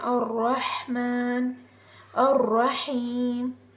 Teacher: یہاں پر تو را کے اوپر زبر ہے تو اس را کو پر پڑھتے ہیں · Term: موٹا